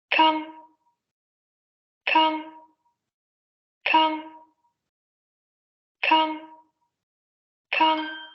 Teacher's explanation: Es un fonema oclusivo, por eso se escucha esa salida abrupta de aire.